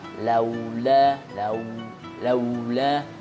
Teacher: bacaan laula atau fathah ketemu waw sukun itu bacanya harus dengan mencucu dan jangan sampai berubah menjadi o hurufnya